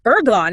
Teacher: The word work, for example, it would have been pronounced with that W in, say, early Doric Greek. But then it transformed into ergon in Attic Greek, completely lost that initial W.